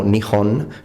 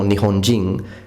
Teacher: Ma la h aspirata in giapponese va pronunciata sempre senza eccezioni